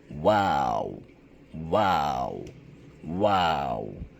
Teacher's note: اس میں و کی آواز 2 دفعہ آئے گی، یعنی ہونٹ گول 2 دفعہ ہوں گے، اور آخری بار جو و کی آواز آئے گی وہ واو نہ ہو بلکہ نرمی سے ختم ہو.